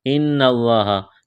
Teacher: نون مشدد اور میم مشدد جہاں بھی آ جائے تو آواز ناک میں چھپائیں گے، غنہ کریں گے